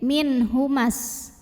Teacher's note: panjang 2 harokat tapi dibaca panjangnya hanya jika berhenti saja sedangkan kalau tidak berhenti madnya gugur mimnya dibaca pendek